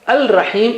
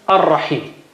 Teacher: It becomes ar-rahim. Lam is sacrificing itself and giving its sound to ra. · Okay, so it gives its sound to ra. So instead of al-rahim, it becomes ar-rahim.